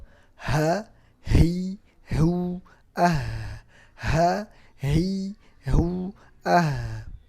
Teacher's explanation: Ha makhrajnya di tenggorokan paling bawah.